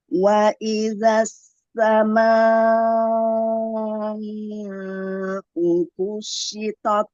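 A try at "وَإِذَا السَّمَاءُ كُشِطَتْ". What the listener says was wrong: Ya, tapi samanya kepanjangan. Ini sampai 6. Dia 4 saja. Kurangi, diulang.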